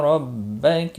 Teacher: را زبر کی وجہ سے پر ہوگا